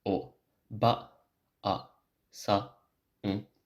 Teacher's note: A long vowel, like in oba-san, counts as two moras, so it's not o, ba, sa, n, but it's o, ba, a, sa, n.